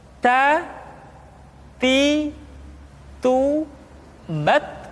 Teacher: huruf ta ketika diucapkan terdengar ada nafas yang mengalir, atau dalam ilmu tajwid disebut dengan sifat al-hamas.